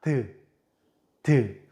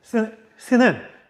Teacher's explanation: 드 막았다가 터뜨려요. 스는 막히는 게 아니라 바람이 새 나가죠? 자, 마찰이 된다는 거예요. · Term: 마찰음